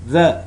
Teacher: it's voiced dental fricative sound